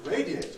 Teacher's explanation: radiate on the other hand is not compressible it has to stay as three syllables because a at that point is strong radiate so you can't